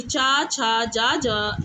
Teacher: चा छ जा ज यह तालव्य ध्वनि के अंतर्गत माने जाते हैं